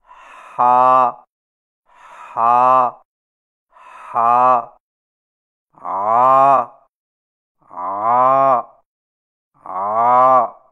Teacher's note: ہا اور عین کی ادائیگی میں زبان کی جڑ کو پیچھے حلق کی طرف دبا کر رگڑ کھاتی آواز میں پڑھیں